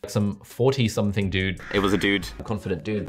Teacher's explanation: In the UK, we may tend to say Dune or even June, but no Brit would be so uncool as to use a yod in dude